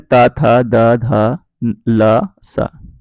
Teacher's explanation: दंत में ता, था, दा, धा, ला, सा। ठीक है, ये वो वर्ण है जिनके उच्चारण में जो जीभ होती है हमारी वो दांतों पर लगती है। ठीक है, और दोनों दांतों पर लगती है।